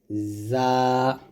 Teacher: জাটা হবে জিব্বাটার নিচে দাঁতে লাগবে।